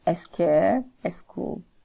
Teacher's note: vowel insertion in the um consonant clusters that come at the beginning of a word. For example, in words like scare and school uh a would be added before that and it would be pronounced as a scare a school.